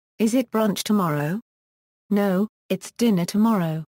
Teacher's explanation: the stress related acoustic differences between the syllables of tomorrow would be small compared to the differences between the syllables of dinner